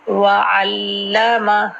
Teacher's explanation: پہلے عین کا مخرج اور لام پر تشدید ہے